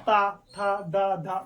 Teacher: बिना दांतों में जीभ लगाए आप नहीं उनका उच्चारण कर सकते, तो इसलिए इनको क्या कहते हैं, हम दंत कहते हैं। · ता बोलेंगे तो इनका उच्चारण दंत, दांत से होता है